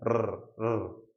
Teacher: तरंग की तरह प्रवाह करती है, एक बार ऊपर एक बार नीचे। तो 2-3 बार कंपन होता है, उस कंपन की वजह से आप क्या बोल पाते हो? र बोल पाते हो। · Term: प्रकंपित